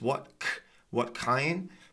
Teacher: So it's just what kind, but the T is not pronounced. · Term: unreleased